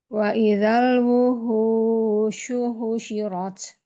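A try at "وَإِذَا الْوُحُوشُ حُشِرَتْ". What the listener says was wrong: Wuhu, ha tenggorokan dimaksimalkan lagi. Wa idzal wuhushu husyirat.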